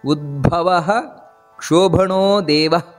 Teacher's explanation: ಇನ್ನು ಭಾ ಅನ್ನುವುದು ಮಹಾಪ್ರಾಣ